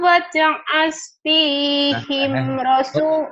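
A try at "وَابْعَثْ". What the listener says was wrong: Bukan waj, ini wab. Oh, jadi waj'al. Wab'as.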